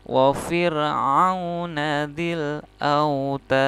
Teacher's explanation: mad arid li sukun tapi ada tambahan dalnya adalah huruf qalqalah, maka dalnya harus dipantulkan. Ini juga sama, mad arid li sukun, dalnya adalah qalqalah, maka dalnya harus dipantulkan.